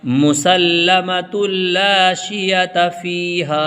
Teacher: مسلمۃ لا شیۃ فیہا، مسلمۃ لا شیۃ فیہا، ہا کے بعد الف آیا ہے، یہ الف مدہ ہے، اس کو کھینچ کے پڑھیں گے